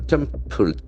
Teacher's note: The accent falls on the first syllable.